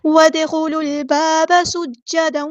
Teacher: سین کی سیٹی کو واضح کرنا ہے ہم نے اور جیم پر شد آ گئی ہے، جیم کی شد کو